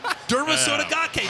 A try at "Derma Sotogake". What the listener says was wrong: I'd say it without emphasizing every single syllable because you know that you might not say it right. Derma Sotogake.